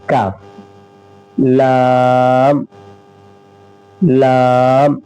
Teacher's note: जबान की जड़ को जब ऊपर उसी के मुकाबिल ऊपर के तालु से मिलाते हैं तो ऑफ निकलता है, लेकिन जड़ से थोड़ा ऊपर वाले हिस्से को जब हम उसके मुकाबिल में मिलाते हैं तो काफ निकलता है, काफ। लाम, लाम जबान का किनारा एक जाहिक से लेकर दूसरे जाहिक और ऊपर के दांतों के मसूड़े से लाम निकलता है